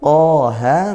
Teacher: Mad Thobi'i panjang satu Alif atau dua harakat